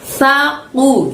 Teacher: Lalu ku pakai kof, keluarkan suaranya dari pangkal lidah hingga menyentuh langit-langit ya